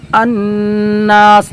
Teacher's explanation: اور نون پر تشدید ہے تو غنہ کریں گے